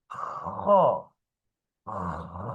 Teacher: আপনি সামনে হাত দিলেই কিন্তু বাতাস বের হচ্ছে আগে বাতাস বের হবে তারপর হরফটা উচ্চারণ হবে